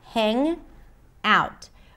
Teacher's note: she doesn't pop the g sound because there isn't. It's an ng sound. Hang out. But the ng sound becomes the beginning of the word out.